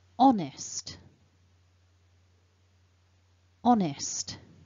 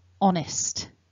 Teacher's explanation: perhaps the most important thing to notice is there's no H sound. It's a silent H.